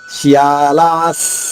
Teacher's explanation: లా దీర్ఘంగా పలికిన తర్వాత విసర్గ ఉచ్చారణ సాపుల్లుగా.